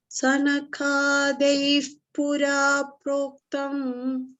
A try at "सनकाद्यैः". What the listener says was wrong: only thing we don't say sanka means sun became half. We should say sanaka na should come full. Sanakadyai pura proktam.